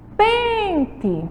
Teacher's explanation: o som aí mais forte, a sílaba tônica é na penúltima